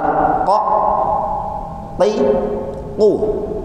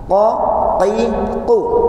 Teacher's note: Ini huruf ko tanpa ada udara yang keluar